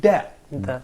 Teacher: The tongue is here. We have the tip of the tongue actually touches that part, which is the back side of the teeth. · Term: stop sound